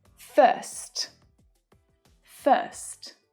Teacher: we have the as in her vowel sound and the st consonant cluster.